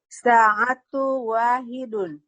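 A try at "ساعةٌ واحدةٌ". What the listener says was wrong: Nggak boleh diidghamkan. Ini bukan baca Quran. Sa'atun wahidatun. Yang sa'atu wahidatun. Nanti idgham bigunah. Nggak boleh dia.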